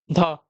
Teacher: ध का उच्चारण आपका दंत होता है।